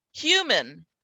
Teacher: there is no vowel sound here between the m and the n hu min and we go straight from the m to the